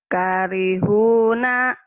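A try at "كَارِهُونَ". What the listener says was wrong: K-nya panjang. Hu-nya panjang.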